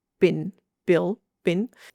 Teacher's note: Thai people automatically turn an L at the end of a phrase into an N